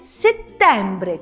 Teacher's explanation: si dice settembre con la E aperta